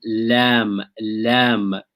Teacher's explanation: there's a deviation of the air, moving of the air to the sides of the tongue